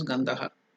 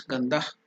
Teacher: But for ease of pronunciation in South India, they will make it complete as Gandhaha. North India, they will do is Gandhah.